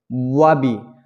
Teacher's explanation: বা হচ্ছে গিয়া দুই ঠোঁটের ভিজায় ভিজায় পাতলা করিয়া